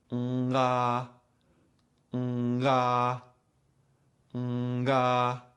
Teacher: If you do it too quickly, you will hear the tongue and soft palate moving away from each other, causing a little click, pop, or abrupt transition. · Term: popping sound